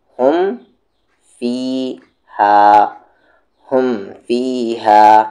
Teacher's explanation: اگر میم ساکن کے بعد میم اور با کے علاوہ کوئی بھی لیٹر آئے، کوئی بھی حرف آئے، وہاں پر ہم اظہار شفوی کریں گے، یعنی میم کی آواز کو بغیر غننے کے اور بغیر اخفے کے پڑھیں گے · نہ چھپایا گیا نہ وہاں پر یہ غنہ کیا گیا، بلکہ ملائیں اور فوراً آگے بڑھ گئے